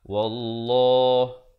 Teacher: Wallah dibacakan tebal 2 harakat.